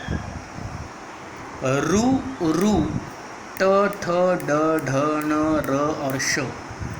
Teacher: इनका उच्चार होता है मूर्धा के सहायता से और इसीलिए इन्हें संज्ञा है मूर्धन्य